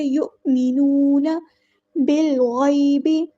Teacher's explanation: با کو ہم لام کے ساتھ ملا دیں گے اور ہمارا حمزۃ الوصل ڈراپ ہو جائے گا، گر جائے گا۔